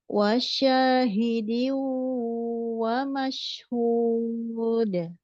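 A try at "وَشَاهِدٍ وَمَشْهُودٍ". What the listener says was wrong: Bukan wasya. Seperti tasdid itu. Tanpa tasdid. Hanya dorong.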